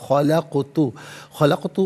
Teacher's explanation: क़ाफ साकिन है लेकिन हरफ़े कलकला है तो आवाज़ लौटती भी महसूस होनी चाहिए